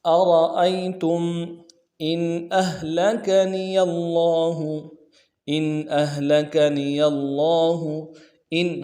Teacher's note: حمزہ کو نون ساکن کے ساتھ ملانا ہے، نون ساکن میں اظہار ہوگا. إن أهلكني الله حمزہ کو ہا کے ساتھ ملانا ہے، ہا کو واضح کریں گے.